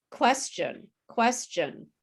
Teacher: people who are not latinos say question with a ch sound